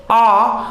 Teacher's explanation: देखिए आ, तो आ का उच्चारण करेंगे तो जीभ का पिछला ही पिछला जो भाग है वो सक्रिय हो रहा है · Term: पश्च स्वर